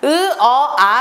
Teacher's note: 발음을 할수록 입이 점점 커지는 거 턱이 내려가는 거 느껴지실 거예요 그래서 턱이 내려간다는 것은 그 안에 있는 혀도 같이 내려간다는 거죠